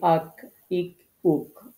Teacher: জিহ্বার গোড়া হতে একটু আগে বাড়িয়ে তার বরাবর উপরের তালুর সাথে লাগে। জিহ্বার গোড়া থেকে একটু আগে বাড়িয়ে তার বরাবর উপরে তালুর সাথে লাগে। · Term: কাফ